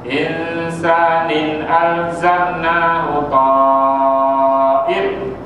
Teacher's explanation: Insanin alzamna. Nin alzamna izhar halqi, tak boleh dengung langsung tu.